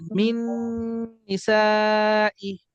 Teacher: নুন সাকিনের পর নুন আসছে, ইদগামের গুণনা করছি মিলায়া পড়ছি